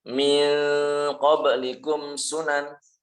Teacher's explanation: Ikhfa, menyamarkan huruf nun. Ya, tapi bukan dibaca eng.